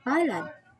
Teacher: spoken with emphasis on the last syllable